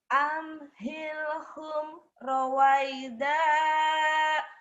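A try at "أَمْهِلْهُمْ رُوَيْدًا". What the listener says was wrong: Ya, bukan ro tapi ru ya. Ruwaida.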